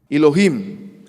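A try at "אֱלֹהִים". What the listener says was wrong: He says Elohim. Okay, the Semitic word for God, El, that's a tseri vowel. It's two dots side by side, a long E vowel. It's actually pronounced A, as in they.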